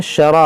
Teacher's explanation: ये रा को मोटा करेंगे, और ये अलिफ मद्दा है, इसको खींचेंगे